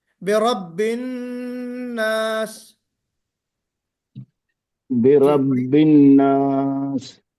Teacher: تھوڑا سا آواز کو روکیے نون پر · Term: غنہ